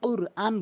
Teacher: আল্লামাল, এখানে যে ভুলটি করে সেটা বলতে কুরআন বলে, বলতে হবে কুরআন। কফটি জিব্বার গোড়া উপরে তালু থেকে কুরআন বলতে হবে